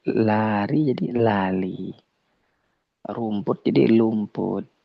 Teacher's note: Takutnya huruf ro ketika tidak bergetar maka dia seperti seperti lam. Kenapa? Karena dia dekat.